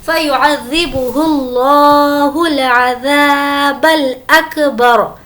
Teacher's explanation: اس لفظ اللہ کو ہم موٹا پڑھیں گے کیونکہ اس سے پہلے پیش ہے